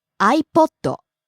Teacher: A poto rises on the second syllable